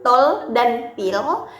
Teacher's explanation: ketika menyebutkan l Dark seperti dalam kata tol dan pil bagian udara keluar dari sisi-sisi lidah